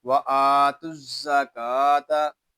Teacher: حمزہ کو ایک الف تک کھینچ کر پڑھیں گے، کیونکہ یہاں کھڑا زبر ہے